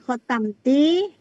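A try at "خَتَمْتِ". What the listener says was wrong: Ti-nya pendek ya Bu ya.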